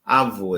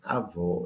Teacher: No caso, um timbre fechado e outro aberto. No fundo, quem estabeleceu a diferença foi uma vogal fechada, O, e a outra vogal aberta, O.